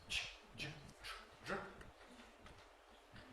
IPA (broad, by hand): ʧ, ʤ, tr, dr